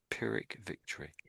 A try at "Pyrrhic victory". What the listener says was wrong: Oh, yes, that's spot on.